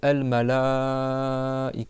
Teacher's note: Je parle du A, tu prolonges le temps de 4 doigts. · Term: mad wajib